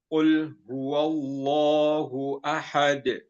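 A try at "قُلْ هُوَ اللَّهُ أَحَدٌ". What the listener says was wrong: Ya, Masya Allah, sudah jelas juga Hamzah dan H-nya.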